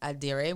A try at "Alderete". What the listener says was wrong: Roll the R maybe, It's close enough.